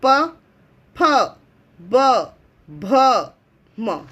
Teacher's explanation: प बोलने से हमें हमारा ओठ होठ जो है वो टच होता है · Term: ओष्ठ